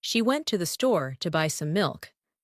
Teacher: The words went, store, buy, and milk are stressed. The rest are spoken quickly and softly.